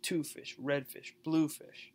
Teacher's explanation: the colors are always stressed the fish though is unstressed